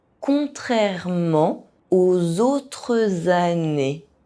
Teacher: in this sentence, it begins with a [z] sound that is added because of the liaison between “autres” and “années”.